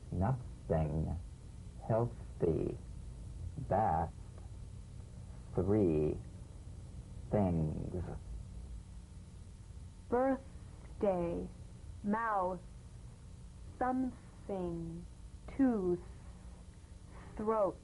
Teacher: The voiceless TH, cognate, voiced TH. The unvoiced tongue point to teeth fricative consonant. Play this dry, gentle, whispered, lightly and softly, without the slightest pressure.